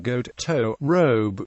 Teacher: oh as in Goat toe robe Etc keeps a back starting place